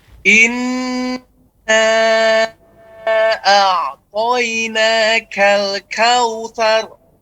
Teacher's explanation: berikan sifat istifal pada huruf nun dan kaf. Ketika kita mengatakan inna a'toina, lebarkan.